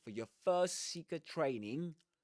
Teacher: Yes, so one long S sound.